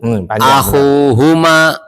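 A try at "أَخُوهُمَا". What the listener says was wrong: Antum akhunya sudah benar, h-nya kurang panjang.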